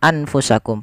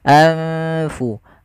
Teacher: Adanya nun sukun bertemu dengan huruf fa, yang dimana nunnya disamarkan ke huruf fa. Nunnya disamarkan ke huruf fa, jangan diganti. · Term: ikhfa